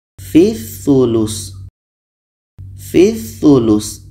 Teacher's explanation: Fi dibaca pendek karena terhubung dengan huruf yang memiliki tanda tashdid.